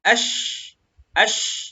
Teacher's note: Karena shin sukun shin ini dia makhrajnya bukan di mulut, tapi dia di lidah. Tengah lidah nempel ke langit-langit gitu ya. Ash sehingga menghasilkan angin yang tafashi ya, angin yang keluar seperti itu.